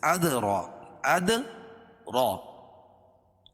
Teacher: را کے اوپر زبر ہے یعنی کھڑا زبر ہے، اس کو پر پڑھیں گے